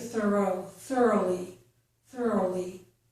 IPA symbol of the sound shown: oʊ